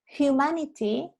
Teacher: Humanity va con una aspiración inicial. La H en humanity es aspirada, no es muda como en inglés.